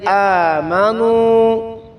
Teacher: نو واو ساکن سے پہلے پیش آ گئی ہے تو لمبا کریں گے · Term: واو مدہ